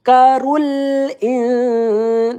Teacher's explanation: Nah, kaf bertasdid kita tekan zakkarul rul. Nah, mengucapkan huruf lam sukun ya ini tawasud ya. Jangan jangan tertahan atau jangan mengalir. Dia di tengah-tengah.